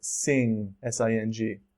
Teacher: the letter n is also pronounced like ng before a consonant so try to avoid the same placement as you would by saying the word no think of it closer to the ng in the word sing